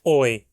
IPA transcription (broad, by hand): oɪ̯